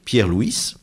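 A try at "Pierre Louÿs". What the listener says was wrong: Pierre-Louis. On prononce pas le S.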